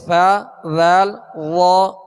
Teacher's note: یہ تینوں حروف نرمی کے ساتھ ادا ہوتے ہیں اور ان کی ادائیگی میں سرا زبان اوپر کے سامنے والے 2 دانتوں کے اندرونی کنارے سے لگے تو ثا ذال وا ادا ہوتے ہیں.